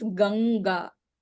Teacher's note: For the whole ka, kha, ga, gha, for all four, the nasal sound is nga. So the anuswara changes to nga and it becomes ganga.